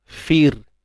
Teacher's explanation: Jadi ra ni kita kena baca dengan nipis.